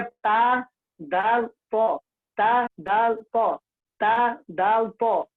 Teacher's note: इनका तीनों का एक ही मखरज है, वह है जुबान की नोक और सना उलिया की जड़